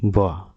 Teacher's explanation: वा जो है दंतोष्ठ ध्वनि होती है